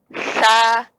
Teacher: Ujung lidah bertemu ujung gigi seri atas.